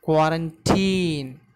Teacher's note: Here the stress is given on very first syllable, that is k.